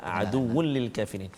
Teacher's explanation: Aduwwul li tanwin bertemu dengan lam, kita tak boleh dengung. Hukum dia idgham bila gunnah.